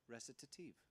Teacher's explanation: we have the opportunity to say 2 T's next to each other, without it just being a 1 T sound